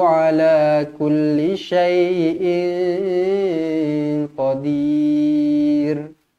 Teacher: Tanwin tak selari bertemu dengan qaf, ikhfa hakiki, dengung 2 harakat.